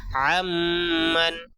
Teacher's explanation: نون ساکن کے بعد میم آیا ہے اس لیے یہاں پہ غنہ ہوگا